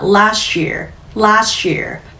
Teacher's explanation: last year 그 T 사운드를 유지한 상태에서 last year 소리가 붙으니까 last year last year 터지는 소리보다 훨씬 부드럽게 넘어가는 연음이 생기죠.